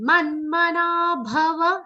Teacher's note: Ma is followed by half na and a complete ma sound.